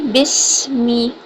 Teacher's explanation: میم دونوں ہونٹوں کو خشک حصوں سے ادا کریں گے